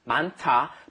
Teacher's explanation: Notice the pronunciation of 많다 is, you get that T sound in there because that hit, that H sound, hits the D and turns it into a T, an aspirated sound.